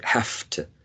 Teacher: unconsciously we are devoicing the voiced v because of the influence of the following sound, which is voiceless